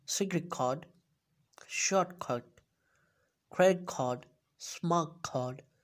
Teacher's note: if T sound comes before K or G sound, it would changes to K sound